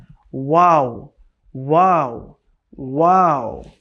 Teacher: শুকনো জায়গা থেকে মিম উচ্চারণ হবে। এরপরে দুই ঠোঁট গোল করে সামান্য খোলা রেখে উচ্চারণ হবে ওয়াও।